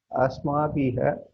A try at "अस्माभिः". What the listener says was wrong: Asmabihi, not asmabiha. Asmabihi, not biha. Visarga takes sound of the preceding vowel. Asmabihi.